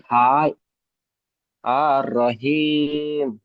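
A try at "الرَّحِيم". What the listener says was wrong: আর টান হবে না, আর রহিম।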